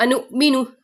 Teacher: اب حمزہ ساکن ہے تو جھٹکا دے کے پڑھیں گے